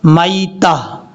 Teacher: یہ جو لاسٹ پہ آپ کو تا نظر آ رہی ہے، اس تا کو ہا بنا دیں گے